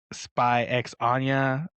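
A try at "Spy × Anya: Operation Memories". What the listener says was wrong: The X is silent. You don't have to say it, bro. It's just just Spy Anya.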